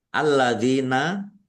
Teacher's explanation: Alladzina lamnya ada tasdidnya dibaca dobel.